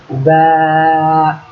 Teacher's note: বার মাখরাজ বা উচ্চারণের জায়গা হলো ঠোঁটের ভিতরের অংশ, ঠোঁটের যে ভিজা অংশ। সাধারণত ঠোঁট এক জায়গায় করে বলবেন বা, ঠোঁট এক জায়গায় করেন বা।